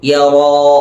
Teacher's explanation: യറാ തഫ്ഖീമാക്കി ഉച്ചരിക്കണം. അഥവാ വായ മൂടിയതായ രൂപത്തിൽ, വായ അടഞ്ഞതായ രൂപത്തിൽ ഉച്ചരിക്കണം എന്നർത്ഥം.